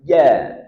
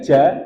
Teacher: jim punya sifat jahr, berarti tidak keluar nafas